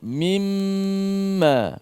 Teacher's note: mim bersabdu ataupun mim musyaddadah yang mesti juga kita kena gunnah dia, panjangkan gunnah dia.